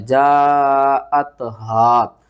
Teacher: ہا کو آپ نے ہلکے سب سے نیچے والے حصے سے ادا کرنا ہے